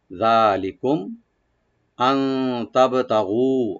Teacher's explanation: যালিকুম, যালিকুম জালটাকে right দিয়ে একালে টানবেন, লি বলবো, আর কাম মিম সাকিন এখানে জাহার করব